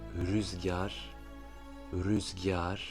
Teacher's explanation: On entend un très léger i entre le g et le a.